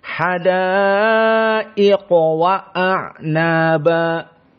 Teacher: Adapun dari segi hukum tajwid, maka di sini qaf dari sifat tafkhim. Maka kalimat ini semuanya muraqqaqah kecuali qaf, maka kita baca dalam keadaan tafkhim.